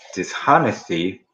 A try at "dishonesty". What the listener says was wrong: Dishonesty H 발음 없어. honest라는 정직한이라는 데서 dishonest는 정직하지 못한인데 그러니까 H 발음 없이 가는 거야.